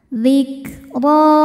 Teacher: Huruf ro dibaca tafkhim. Karena barisnya fathah, cara bacanya ditebalkan.